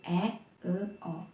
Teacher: Vokal madya dibentuk dengan menempatkan posisi lidah di tengah mulut